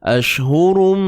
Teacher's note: Masukkan bunyi tanwin ke dalam mim secara sempurna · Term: Idgham bi gunnah